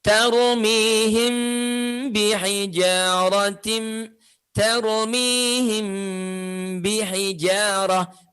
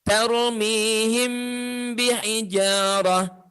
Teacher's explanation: Mimnya ya dibaca dengan cara yang sama, yaitu merapatkan kedua bibir, tapi disertai dengan dengung. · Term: ikhfa